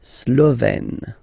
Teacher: Remember, E accent grave, you open it, Slovène.